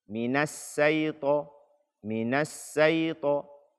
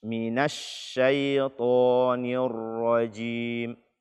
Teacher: Angin yang keluar ketika kita membaca shin tersebut, dia berpencar. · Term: tafasyi